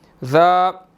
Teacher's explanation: آگے الف مدہ ہے, 1 سیکنڈ ہم نے لمبا کرنا ہے